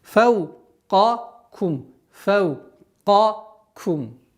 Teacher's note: Обращайте внимание на твердое произношение каф